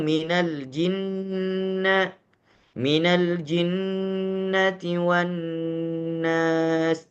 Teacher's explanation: gunnah dibaca secara sempurna di dalam keadaan mim dan nun yang ditasydidkan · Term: gunnah kamilah